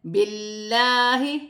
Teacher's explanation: اللہ کی لام سے پہلے زیر آ رہی ہے، اللہ کی لام باریک پڑھی جائے گی